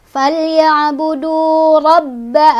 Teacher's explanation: agak ditekan karena ba-nya ada tasydid.